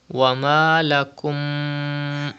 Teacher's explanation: There is another mim after mim sakin. The rule idgham shafawi will be done and gunna will be done.